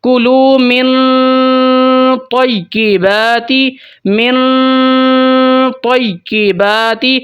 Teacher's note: for example یہاں پہ دیکھیں، آیت ہے کلو من، نون کے اوپر جزم ہے اور آگے 15 حروف میں سے طا آگے آ گئی ہے، تو یہاں پر ہم اخفاء کریں گے، مطلب نون کی آواز کو چھپا لیں گے اور غنہ خفیف کریں گے، ہولڈ کریں گے 2-3 سیکنڈ کے لیے